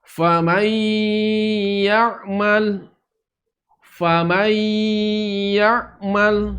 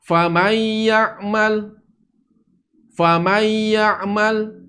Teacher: Nun masuk ke dalam huruf ya, maka dia tidak dilangsungkan, tapi ditahan dulu suaranya.